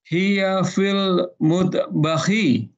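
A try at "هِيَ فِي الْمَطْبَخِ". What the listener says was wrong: Fil matbakhi. Fil matbakhi, bukan mut.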